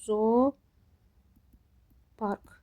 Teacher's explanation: Zoopark sözündə həm uzanma var. Yəni onlardan biri düşür, biri uzanır. Həm də səs düşümü var.